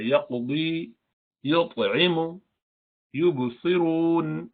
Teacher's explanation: You have to do a slight qalqala because you have to now pronounce the next letter straight away. If you keep doing ya qadi, so then there will be too much artificial. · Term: minor qalqala